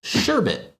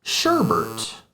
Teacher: And rather than omit the R, I actually add an additional R to this word, making it sherbert.